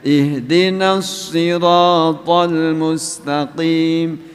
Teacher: kepanjangan Mad Thobi'i itu hanya dua ketuk